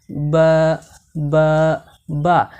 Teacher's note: তন্মধ্যে বাকে দুই ঠোঁটের ভিজা অংশ, মানে দুই ঠোঁটের ভিতরের দিকে যে ভিজা অংশটুকু রয়েছে সেই দুই ঠোঁটের ভিজা অংশ থেকে বা হরফ উচ্চারিত হয়